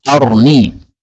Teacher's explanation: arini ra-nya harus boleh disukun